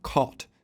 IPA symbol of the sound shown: kɔt